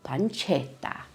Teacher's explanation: those two consonants at the end, those t's make the emphasis go on that part of the word